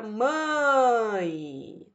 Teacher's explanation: nota que iniciou forte, iniciou com vogal, terminou com semivogal. Então, iniciou forte, terminou fraca. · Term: decrescente